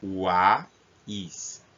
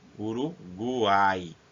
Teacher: Observe que na palavra quais nós temos o som do U, do A e do I. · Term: tritongo